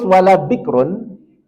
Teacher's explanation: ini kita sukunkan rnya sebelumnya sukun sebelumnya kasrah maka dia rnya tipis Bik rnya kita tipiskan dengan senyum biker dia Ro yang tipis